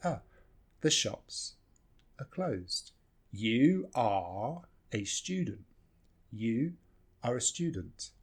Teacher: almost always we just reduce this R to ah